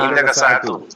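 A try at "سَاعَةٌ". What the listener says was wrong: হ্যাঁ, সাআতুন তানবিন সহকারে হবে।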